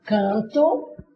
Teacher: Esse N aqui não tem som nenhum. Ele não tem som. Qual é a função desse N? É de ser o nasalizador desse A.